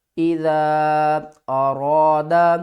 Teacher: را کے اوپر زبر ہو تو ہم نے را کو موٹا پڑھنا ہے